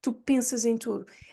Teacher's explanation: pronounce that S in the middle or at the end of pensas as a Z, because you have a vowel following it. So it's a an S between two vowels.